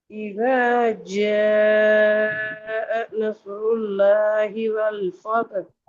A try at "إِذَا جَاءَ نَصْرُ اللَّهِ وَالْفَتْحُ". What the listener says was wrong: வல் பாதகு அல்ல, வல் ஃபத். வல் ஃபத்.